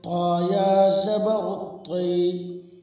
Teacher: طا یا زبر طی، یا ساکن سے پہلے زبر ہے، اس لیے یا لین ہوگی۔ یا لین کو نرم آواز کے ساتھ جلدی ادا کرے